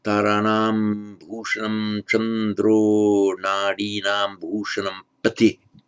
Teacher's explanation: The ah before a voiced consonant becomes O.